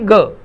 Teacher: ग कंठस्थ ध्वनि है, ग अल्प प्राण ध्वनि है और ग सघोष ध्वनि है।